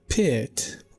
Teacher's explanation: the word pit will be high in front